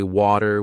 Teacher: Now you switch to a British show and you hear water again, but it sounds different. In American English, people might say water with a d sound. While in British English, it's often way too with a t sound.